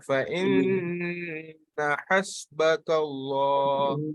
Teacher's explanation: So فإن immediately there is no pulling. Immediately the ha comes. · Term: short vowel